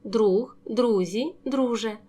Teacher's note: чергуються приголосні г з ж